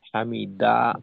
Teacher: হামিদা শেষের হাটা উচ্চারিত হয় না। উচ্চারণ আসে না।